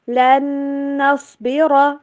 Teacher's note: قُلْتُم یا موسیٰ لن نصبر، لن نصبر، لن کے اوپر غنہ، صاد اور را دونوں موٹے پڑے جائیں گے